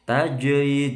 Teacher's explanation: Tajri, jimnya qalqalah sughra